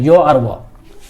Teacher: इसको अर्धस्वर इसलिए बोलते हैं कि इसका जब उच्चारण करते हैं तो मुंह में जैसा लग रहा है कि स्वर का आभास होता है। ठीक है, ये तो व्यंजन है यो और व, लेकिन इसका उच्चारण जो है स्वर की तरह लगता है, इसलिए इसको अर्धस्वर कहा जाता है।